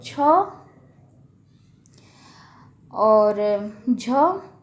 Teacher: महाप्राण, तो वायु की मात्रा इसमें जो है अधिक होती है